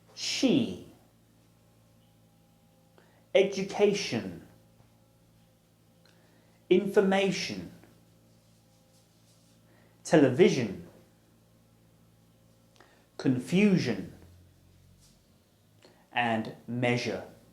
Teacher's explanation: And finally, the last pair is sh and zh. Again, we're pushing air through our teeth, but the lips are more rounded and the tongue is lower in the mouth. So the airflow is a bit less intense. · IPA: /ʃ/ /ʒ/